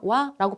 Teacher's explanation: 살짝 오에 가까운 반모음 소리 아랑 결합시켜서 와라고 발음하게 된다고요